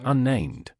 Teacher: when I say unnamed, we pronounce both NS.